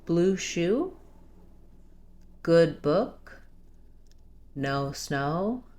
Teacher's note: Notice that the top vowels here are all rounded vowels